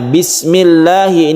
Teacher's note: Bismillahi ini ada lam jalalah yang dibaca tarqiq karena sebelumnya kasrah tarqiq artinya tipis